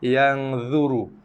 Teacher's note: ra dibaca tebal juga ketika ia berbaris dhammah, iaitu berbaris hadapan